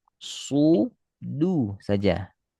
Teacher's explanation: Di ujung tanpa percikan angin pada du.